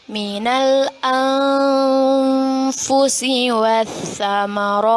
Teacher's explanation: kita baca dengan samar-samar dan ditahan dua harokat